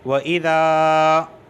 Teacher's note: الف سے پہلے زبر آیا اس وجہ سے میں کھینچ رہا ہوں